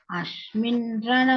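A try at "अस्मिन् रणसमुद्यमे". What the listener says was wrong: Ashmin is not there. Saraswati sa. Asmin rana samudyame.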